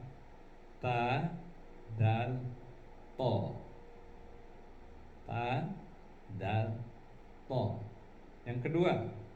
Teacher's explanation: Bila ujung lidah diletakkan pada pangkal gigi bagian atas, maka di situ akan keluar 3 buah huruf.